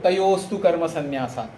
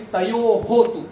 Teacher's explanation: There is a Visarga and it becomes Sa.